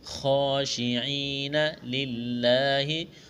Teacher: خا کو موٹا کرنا ہے، کڑا زبر ہے، ایک الف کے برابر کھینچنا ہے، یا ساکن سے پہلے زیر ہے، یا مدہ ہے، ایک الف کے برابر کھینچنا ہے، لفظ اللہ کے نام سے پہلے زیر ہے، لفظ اللہ کے نام کو باریک کرنا ہے۔